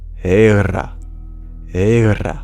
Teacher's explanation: And the R would be retroflex, thus making it hera, hera.